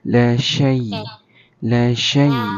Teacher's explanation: Nah, jangan sengau kan. Jangan sengau. Kena 100% keluar dekat mulut ya.